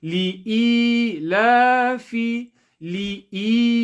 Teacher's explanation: So to make sure we stretch the e, equivalent to 1 second, 1 alif.